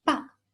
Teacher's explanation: The last tone, the falling tone